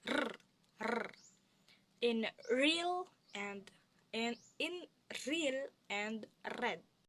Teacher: Refloplex consonants include the sounds produced by the tongue curled slightly upward toward the hard palate, such as r, r, in real and in real and red.